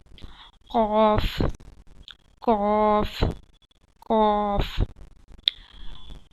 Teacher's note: क़ाफ़ comes out from the root of the tongue and the soft palate। क़ाफ़ ज़बान की जड़ ऊपर के तालू से लगाए